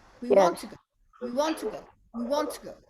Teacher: when you pronounce to here, you pronounce it very weak because here you have a schwa.